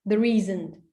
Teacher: Put stress on isn't because it's important that there is no such thing on the desk.